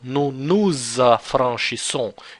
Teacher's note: Let's put it in blue. And that's why you pronounce S here as a Z, because it's followed by the first vowel of the following word in the sentence